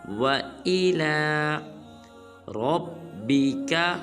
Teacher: اس کے بعد آیت نمبر 8 ہے ہمارے آج کے لیسن کی آخری آیت ہے، وہ ہے وَإِلَى، نہ واو کو لمبا کرنا ہے نہ حمزہ کو بلکہ لام کے اوپر کھڑا زبر ہے تو لام کو لمبا کریں گے